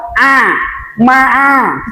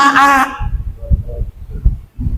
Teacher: Ain dari wastul halki, dari tengah-tengah tenggorokan.